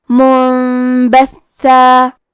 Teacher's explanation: کلمت منبثا میں نون ساکن ہے، پھر حرف البا ہے، با حروف القلب میں سے ہے، قلب کا معنی ہے بدل دینا، تو ہم نون ساکن کو ہلکی میم میں بدل کے اور غنہ کے ساتھ یہ حکم کو ادا کریں گے